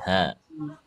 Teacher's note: ha biasa ha tengorokan bawah